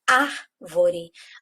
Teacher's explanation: A sílaba forte é o ar.